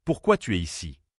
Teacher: Pour une phrase interrogative ouverte avec pourquoi, comment, quand, la voix descend. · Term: L'intonation